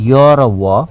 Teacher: य आदि य मात्रै उच्चारण हुन्छ, पछाडि अ स्वर चाहिँ लाग्दैन। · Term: अर्धस्वर